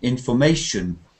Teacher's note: The third syllable is stressed.